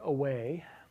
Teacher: You can feel your lips engaging as you make the W in the middle of away. It's a bilabial sound, but it's not a bilabial stop or a fricative. It is a bilabial approximate.